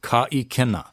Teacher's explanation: But you'll notice that at the beginning of the I, there is the okina at the very beginning of ikena, which means that kuma, ka, ikena. You want to make sure you get that glottal stopping of the sound on ikena, ka ikena. You don't want to say ka ikena, because then you would be dropping the okina, ka ikena, and it might have a different meaning.